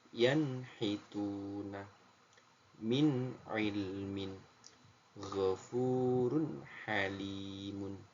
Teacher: tidak ada dengung tidak ada samar semuanya dibaca dengan jelas